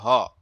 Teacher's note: ह ध्वनि हिंदी में स्वरों की तरह बिना किसी अवरोध के उच्चारित होती है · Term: काकल्य